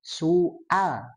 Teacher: maka si A-nya ditepatkan ke pangkal tenggorokan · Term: Hamzah, hamzah